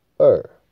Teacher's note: 二刚好也跟台语的声调一模一样，二就是华语的第四声